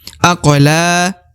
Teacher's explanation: Huruf lam dibaca 2 harokat karena terdapat alif di depan huruf la ya. Ini adalah merupakan tanda 2 harokat, maka dibaca la, dipanjangkan 2 harokat.